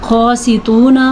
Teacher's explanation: قاسطون موٹا قاف بھی ادا کرنا ہے اور توا کو بھی پر پڑھنا ہے